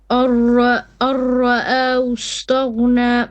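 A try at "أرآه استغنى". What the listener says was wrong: Now too much tikrar on the ra. Tone it down and hu. This is ha. Hustaghna.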